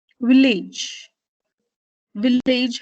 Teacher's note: Village, village has two syllables, you stress the second syllable.